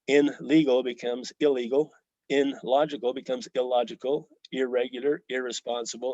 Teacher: it changes completely when next to an r or an L